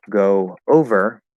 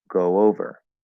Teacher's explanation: get a connection with a small a small w sound okay it's not a full w it's a light w